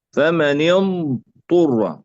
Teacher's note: ضاد أولا ثم طاء، لا ندغم الضاد في الطاء